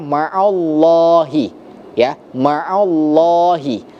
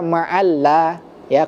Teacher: maka dia disebut dengan lam tafkhim yang tebal